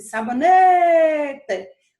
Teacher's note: Quando eu passo mais tempo no né, essa vai ser a penúltima sílaba